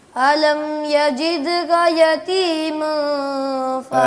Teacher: یہاں اخفا آ گیا ہے دوبارہ سے نا, یعنی کہ نون کو چھپانا ہے, تھوڑا لمبا کرنا ہے آواز کو